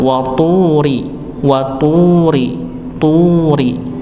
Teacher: huruf ta karena dhammah maka dimonyongkan